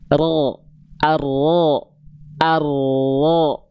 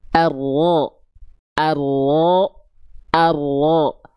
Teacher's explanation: Jadi ujung lidahnya mah dia nggak nempel, sehingga ada celah sedikit kan ya. Yang nempelnya punggung lidah. · Jadi si ujung lidah kitanya mah gak nempel, ya. Yang nempelnya bagian punggung lidah. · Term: huruf ro